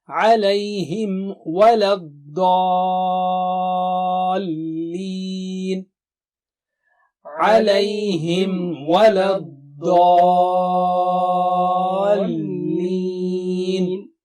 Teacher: Alayhim wa, alayhim. Lips have to be merged out from Mim Sakina and then say wa.